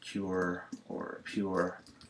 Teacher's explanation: long U plus a tongue curl